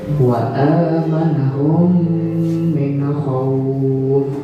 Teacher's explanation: Mim sukun bertemu mim dibaca dengung.